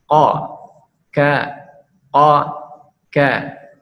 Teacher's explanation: Huruf qaf dengan kaf yaitu menempelkan akar lidah ke langit-langit